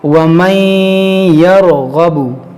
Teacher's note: ادغام کا مطلب کیا ہے کہ نون ساکن کو یا میں داخل کر کے ناک میں آواز لائیں گے، گنہ کریں گے۔